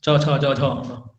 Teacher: इन व्यंजनों का उच्चारण करने में जीभ तालु को स्पर्श करता है, जो जीभ है आपका वो तालु को स्पर्श करेगा। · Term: तालव्य व्यंजन